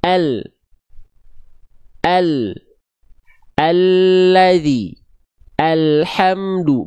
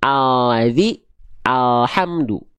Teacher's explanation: Begitu pun dengan yang kanan di sini Nah ya jadi begini samping lidah depan kiri dan samping lidah depan kanan kedua samping lidah tersebut menyusur sampai ke ujung lidahnya disentuhkan ke langit-langit bagian depan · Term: lam hijaiyah